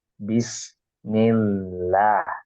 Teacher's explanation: ada kasrah ya sebelumnya sebelum lafaz Allah lafaz jalalah maka kita harus baca dengan bacaan tipis ya Enggak boleh kita baca dengan bacaan bismillah l tapi seharusnya bis